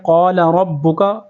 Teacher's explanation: را کو با کے ساتھ ملائیں گے, سختی کے ساتھ جماؤ کے ساتھ پڑھیں گے